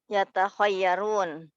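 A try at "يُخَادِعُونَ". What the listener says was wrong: Itu masih ta. Huruf keduanya masih ta. Ya, huruf jim setelah ta itu ada jim. Kemudian ada ha. Yuh. Lihat yukha. Yukha.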